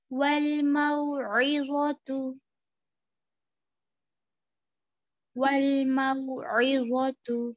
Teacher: واؤلین یعنی نرم واؤ، واؤ ساکن سے پہلے جب زبر آئے گا تو اس کو او کی آواز سے ادا کرنا ہے. ٹھیک ہے، نرمی کے ساتھ.